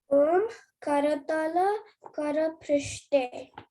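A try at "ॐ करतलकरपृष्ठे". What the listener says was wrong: Very nice, very nice, very nice बेटा.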